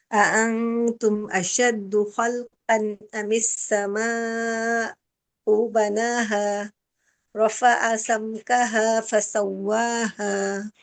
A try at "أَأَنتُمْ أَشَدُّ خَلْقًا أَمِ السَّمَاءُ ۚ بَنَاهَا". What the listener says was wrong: So this sama, it's better to stop. You're not stopping. You're saying samau. It's if there's a small pa, that is one of the stop signs. So you say as-sama, stop at a. Better to stop because it's a pa. It's a you stop.